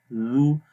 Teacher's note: اس کے بعد ہے زال، زال کو نرم پڑھتے ہیں، زو، زبان کی نوک کو اوپر والے دانتوں کے کناروں پر لگاتے ہیں تو زال کی آواز پڑھی جاتی ہے